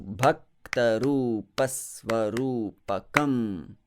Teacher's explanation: the syllable is heavy here, and therefore I express that heaviness by slightly prolonging that Sva, that S sound in Svarupakam.